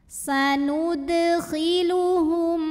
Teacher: Ada izhar syafawi karena mim sukun menghadapi huruf yang bukan mim, bukan juga ba. Maka mim sukun dibaca m jelas.